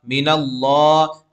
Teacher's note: अल्लाह के लाम पुर पढ़ेंगे क्योंकि अल्लाह के लाम से पहले ज़बर है